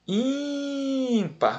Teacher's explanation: A sílaba mais forte é in.